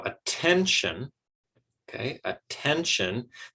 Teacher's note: that has three syllables and we're giving stress to the second syllable there